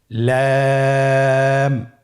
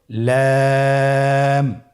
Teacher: লাম হরফটির মাখরাজ হলো জিহ্বার আগার কিনারা উপরের দাঁতের মাড়ির সঙ্গে লাগিয়ে উচ্চারিত হয়।